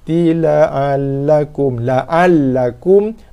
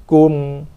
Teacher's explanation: So jelaskan mim, keluarkan sikit bunyi dengung padanya, sikit saja dengung yang tak sempurna. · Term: izhar syafawi